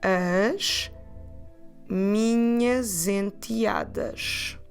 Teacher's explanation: connection between minhas and enteadas with the sound Z